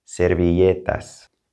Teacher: the two L's together have a Y sound. Servilletas.